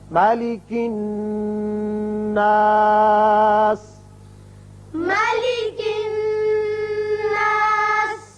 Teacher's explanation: جب ہم نے وقف کیا تو پھر ہم نے طویل کیا اور نون یہاں غنہ ہوگا۔